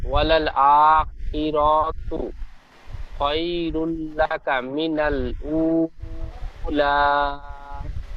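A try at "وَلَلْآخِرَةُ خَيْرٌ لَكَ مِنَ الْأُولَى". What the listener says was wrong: ওয়ালাল আখিরাতু, ঠিক এমন ভাবে র টি টান দিয়েছেন, রর উপরে যাওয়ার আছে, টান হবে না। আখিরাতু খায়রুল লাকা মিনাল উলা।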